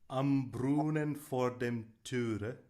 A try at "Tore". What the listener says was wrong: No. If it had an umlaut on the O, it would be Töre, but this is Tore. Tore. Yeah, it's an O. So it's am Brunnen vor dem Tore. Tor. Open it up more. Tor.